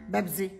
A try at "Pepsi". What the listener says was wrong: Pepsi. Pepsi. Mom, look at the can. Look at the letters. It's Pepsi. Mom, with a P, not a B.